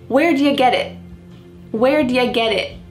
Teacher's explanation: That final T is not really pronounced. Your tongue is going to be in the same place as if you're going to make a T sound. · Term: stopped T